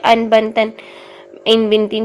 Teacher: نون کی آواز کا اظہار ہوتا ہے، اور یہ اظہار 1 سیکنڈ میں ہی پڑھا جاتا ہے۔ یہاں پر 2 سیکنڈ 2 حرکات کا ٹائم نہیں لگایا جاتا، بلکہ 1 حرکت میں ہی اس کو اظہار کو کیا جاتا ہے۔